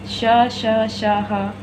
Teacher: ये हैं ऊष्म व्यंजन, क्योंकि जब हम इनको बोलते हैं तो गर्म हवा हमारे मुंह से बाहर निकलती है